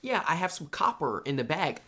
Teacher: I don't I don't pronounce the R at the end of words if you guys noticed.